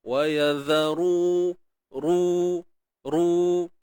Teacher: Huruf ra yang baris depan mesti kena tebal. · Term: huruf ra baris depan